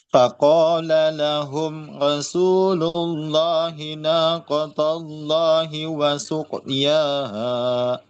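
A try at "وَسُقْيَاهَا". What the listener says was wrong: Ya, masih terasa di sini tertahannya sama di sini ya. Qofnya masih wasuq.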